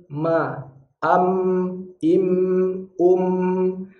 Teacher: Makhrajnya mim adalah bertemunya dua bibir.